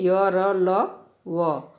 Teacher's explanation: ये स्वर और व्यंजन के बीच में इनका उच्चारण स्थान होता है। जीभ, तालु, दांत और होठों के निकट आने से होता है, किंतु श्वास में रुकावट कम होती है। जैसे य, र, ल, व। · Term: अंतस्थ व्यंजन